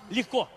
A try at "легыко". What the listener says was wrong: Не легко. Легыко. Легыко.